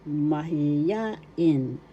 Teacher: First syllable ma, second syllable hi, third syllable ya, fourth syllable in. The accent mahiyain is in the third syllable.